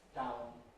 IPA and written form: t⁼aʊn (town)